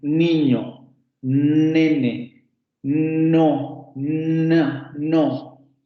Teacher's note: el bloqueo de la salida del aire ocurre entre la lengua y los alvéolos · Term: la N